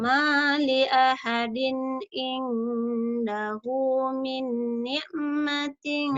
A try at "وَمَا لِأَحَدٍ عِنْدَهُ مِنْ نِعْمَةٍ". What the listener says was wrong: Minnya ditahan sedikit kan guna. Idgham bi guna. Min ni. Kamu kalau gunanya kurang nahan dikit, tambahin dikit lagi.